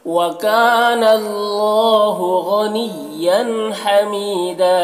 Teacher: या मद्दा है, एक अलिफ के बराबर खींचेंगे, और यहाँ पर वक्फ करेंगे तो एक ज़बर के साथ अलिफ पढ़ेंगे, जैसे वकान अल्लाहु गनिय्यन हमीदा। · वकाना में अलिफ मद्दा है, एक अलिफ के बराबर खींचेंगे। अल्लाह को पुर पढ़ेंगे, खड़ा ज़बर है, एक अलिफ के बराबर इसे खींचेंगे। गनिया गैन को पुर पढ़ेंगे, और यन के तनवीन में इजहार हो रहा है, इसे जल्द पढ़ना है।